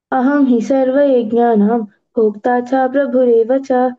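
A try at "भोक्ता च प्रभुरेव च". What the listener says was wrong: భోక్తా చ ప్రభురేవ చ. భోక్తా చ అంటే దీర్ఘం వినిపిస్తుంది, సో భోక్తా చ ప్రభురేవ చ.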